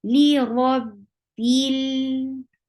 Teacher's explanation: Li rab, attached with ba, and there is kasra on ba, so make sure you give E sound and attach with lam. Don't drop this E sound. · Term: kasra sound